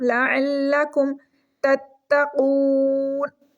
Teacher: second والے تا کو پریس کر کے 1 سیکنڈ رک کے پڑھیں گے · واو مدہ ہے، 1 سیکنڈ کے لیے اس کو لمبا کر کے پڑھیں گے